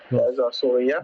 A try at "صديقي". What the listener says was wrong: No, there's a Sa and then a Dal. صديقي.